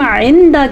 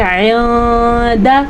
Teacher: تو اس کو ہم عند کے بجائے عند, تھوڑا سا نون کو چھپانا بھی ہے اور کچھ غنہ بھی کرنا ہے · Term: اخفا